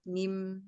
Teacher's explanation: Jadi dia tertutupnya rongga mulut, tapi dia terbukanya rongga hidung gitu pada saat mengucapkan mim dan nun. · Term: khoisum